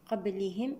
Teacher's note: النون مع القاف إخفاء حقيقي بغنة مفخمة المرتبة الدنيا